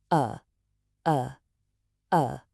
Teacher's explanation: Relax everything in your mouth and just make a short weak uh sound. Just a little puff of air like this. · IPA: /ə/